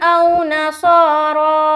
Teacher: स्वाद मोटा हर्फ और रा को भी मोटा करना है क्योंकि इसके ऊपर खड़ा जबर है।